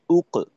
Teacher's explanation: আচ্ছা, এই পর্যন্তই আমাদের মূল আলোচনা ছিল যে হামজার, যেমন হামজা কফ পেশ উক, এই যে আওয়াজটা করলাম, তো এইখানে আমাদের ঠোঁট দুইটা অবস্থা হবে ঠোঁটের। প্রথমত উ বলার সময় ঠোঁট গোল হবে, এবং কফের উচ্চারণ বের করার সময় ঠোঁট খোলা রেখে কফের উচ্চারণটা বের করতে হবে।